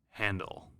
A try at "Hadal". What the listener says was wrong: There's no N, so it'd be Haddle. We probably are pronouncing that way wrong.